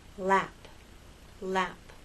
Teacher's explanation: The tip of your tongue for L and lap touches that bump and the sides are down. With R and rap, the tip of your tongue goes up towards that bump, but it doesn't touch.